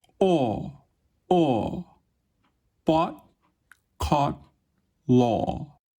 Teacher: It is produced in the back of the mouth with a fairly low tongue position. It is made with your lips open and a bit rounded. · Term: mid back rounded vowel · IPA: /ɔ/